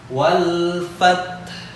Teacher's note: Huruf H terakhir, ya, dibaca lebih rendah daripada ta. Tetapi ingat, ta bukan huruf qalqalah.